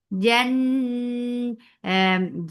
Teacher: Jeem has his machhura letter. There is no flow of breath. Jan this gunna is akmal, so keep the sound in your nose for a longer time.